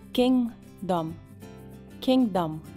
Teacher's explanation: A letra G você não vai pronunciar, mas você faz como se fosse pronunciá-la e no meio você desiste.